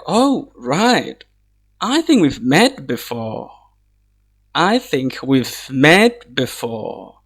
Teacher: It's just a statement, so it's going to take the normal intonation. It's falling tone, which is very simple.